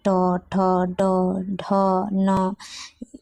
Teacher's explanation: ट, ठ, ड, ढ, न का उच्चारण स्थान होता है मूर्धा।